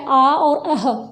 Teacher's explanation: देखिए, अब सबसे पहले हम बात कर रहे हैं आ और अंग, यानी कि अह, जो हमारा विसर्ग है, इनका उच्चारण स्थान क्या है, कंठ। यानी कि जब हम आ और अह बोलते हैं तो गले से, कंठ से हवा निकलती है, वहाँ हल्की सी वाइब्रेशन होती है, इसलिए इनको क्या कहा गया है, कंठ या कंठ है।